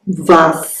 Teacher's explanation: Se eu disser isoladamente, sai vas, sai surdo. Se fosse um carioca, ele iria dizer vais depois, e se fosse seguida de silêncio, vais.